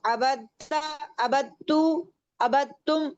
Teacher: यहाँ पे ता पे तशदीद जो है वो दाल और ता के मखरज जो हैं वो सेम है, इनकी आवाज एक तरह से निकल रही होती है। तो जब दाल पे तशदीद सुकून आता है, जज़म आती है, तो ता पे तशदीद आ जाती है।